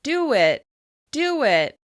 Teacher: For example, do it becomes do it, do it. We use the w shape to link the two words.